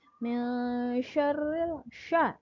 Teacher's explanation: minnya itu sedikit ditahan. Karena itu hukum bacaannya itu adalah ikhfa